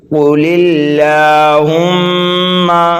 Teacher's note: یہ لام اللہ جو ہے باریک ہوگا کیونکہ لام اللہ سے پہلے زیر ہے